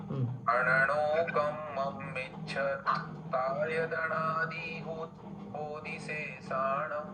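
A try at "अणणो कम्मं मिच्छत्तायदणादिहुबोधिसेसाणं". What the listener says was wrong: मिच्छत तायदनादि हुबोधिशेषाणं। मिच्छत डबलता है ना।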